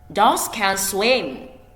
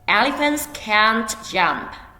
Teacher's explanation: The first one is short. The second one is longer and stronger.